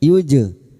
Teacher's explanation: Jim sukun yang mati asli di tengah kalimat qalqalah sugro. Jangan lupa dipantulkan